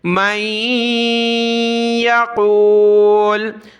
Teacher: رکنے کا طریقہ لام پر پیش ہے تو اس کو ہم نے سکون دے دیا کیونکہ ہمارا سانس ٹوٹ گیا